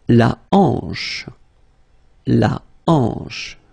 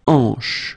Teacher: H here is not pronounced, so you get the sound en, hanche at the beginning